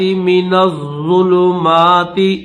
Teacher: یہ جو نون ہے اس نون کو ضا کے ساتھ ملائیں گے، ضا کے اوپر بھی تشدید ہے